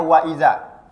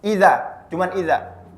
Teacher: Misalnya dalam sebuah ayat terdapat huruf wawnya, misalnya wa iza. Kemudian ketika dibaca hilang wawnya, iza, cuman iza. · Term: mengurangi huruf